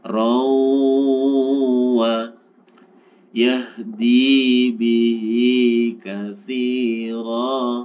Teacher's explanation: Rawa, tanwin bertemu dengan waw, masih ingat? Ini disebut dengan idgham bi gunnah, yaitu dimasukkan disertai dengung.